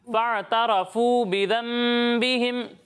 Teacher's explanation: را پر زبر ہے تو را کو پر پڑھیں گے